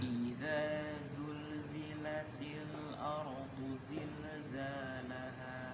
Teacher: Itu lam sama ra yang sukun sifatnya tawassut, jangan langsung berhenti seperti syiddah. Idza zulzilatil ardu, jangan begitu, ngalir aja sedikit.